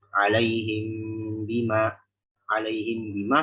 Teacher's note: Ada dengan itbaq atau intibaq yang cara umum kita pakai, merapatkan bibir tanpa ditekan.